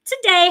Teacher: Today has two syllables. The first syllable in today has a short sound, and the second syllable has a glide sound.